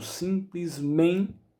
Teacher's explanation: A palavra simplesmente é uma paroxítona, ou seja, tem a penúltima sílaba tônica.